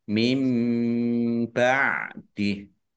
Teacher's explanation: Nun sukun bertemu dengan huruf ba, bacaan iklab, dibaca membalik, nunnya dibaca mim dulu, ya. Ditandai ada mim kecil berdiri.